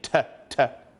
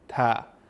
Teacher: But when it comes to the letter ta, we are using the flat part of our tongue.